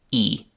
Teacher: the word he, which very often is pronounced as simply e. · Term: elision